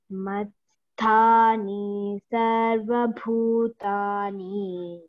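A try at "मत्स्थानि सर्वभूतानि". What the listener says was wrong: Again, matsthani is short vowel, you know, ending. Matsthani sarva bhutani.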